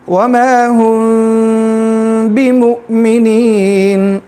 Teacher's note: اخفاء کا مطلب چھپانا. میم کو جو ہے ہم تھوڑا سا چھپا کے پھر با میں جو ہے مرج کر دیں گے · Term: اخفاء شفوی